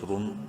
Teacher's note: را میم دو پیش رن، را کو منہ بھر کے پڑھنا ہے پیش کی وجہ سے